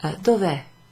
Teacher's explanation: So you take off the A because one vowel followed by another vowel is quite difficult for Italian, so they just make it shorter. Dove instead of dove è. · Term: contraction